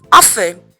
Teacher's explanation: The T is silent. You do not pronounce the T, so it's often.